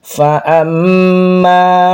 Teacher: mim yang bertasydid dibaca namanya itu gunah ya dibaca ditahan